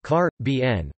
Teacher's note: The two most prevalent pronunciations of Caribbean outside the Caribbean are car bn, with the primary stress on the third syllable